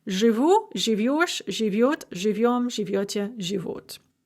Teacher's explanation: So жить, to live, becomes живу, живешь, живет, живем, живете, живут. The stress is always fixed on the ending. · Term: fixed end stress